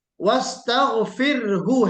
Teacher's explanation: را کی تقریر کا خیال کرنا ہے، پھر اس کے بعد ہا کو ساکن پڑھنا ہے